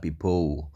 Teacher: kalau britishnya some people l-nya itu kadang-kadang bisa diganti W ya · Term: aksen London